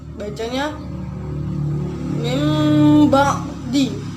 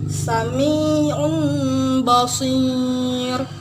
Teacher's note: nun matinya diubah menjadi mim mati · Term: iklab